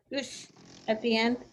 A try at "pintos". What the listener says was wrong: Pintos with S, with a simple S. Pintos. There's no sh. It sounds like sh, but there's only an S.